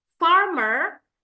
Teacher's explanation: the r at the end of word is also not pronounced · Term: non rotic